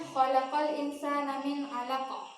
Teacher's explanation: Cara membacanya memantulkan suara dengan pantulan yang kuat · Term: qalqalah kubra